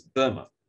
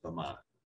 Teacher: the stress principally on the first syllable and the second syllable is unstressed